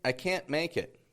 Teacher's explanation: we drop that T and we pronounce the N short